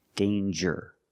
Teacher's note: with danger, we hear the J sound. Danger. There's no nasal sound. There's no It's a regular N.